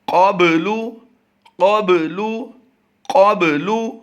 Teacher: इसके क़ाफ पुर करेंगे और बा पर कलकला करेंगे